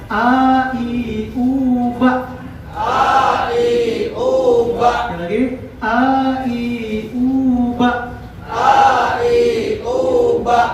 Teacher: dia mempunyai sifatul huruf adalah al-jahr, termasuk asyiddah. Dia tertahan. · Huruf A yaitu keluar dari pangkal tenggorokan, bukan dari lidah.